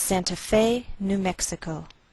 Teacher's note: We place the most stress on Fe. That's our primary stress. I believe we do this because we took the name from a foreign language.